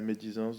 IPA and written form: me.di.zɑ̃s (médisance)